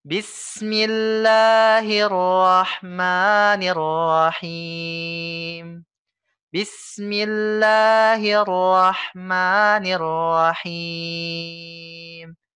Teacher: Rahimnya ini 3 sampai 4 harokat karena dia mad arid lisukun ya. Mad atau tanda baca panjang yang mana terbentuk dari mad tabi'i yang mana huruf selanjutnya disukunkan.